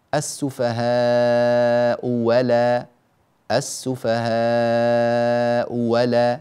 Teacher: يبدلون الهمزة الثانية واوا مفتوحة